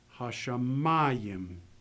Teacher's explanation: Here, the accent is going to go with the mem.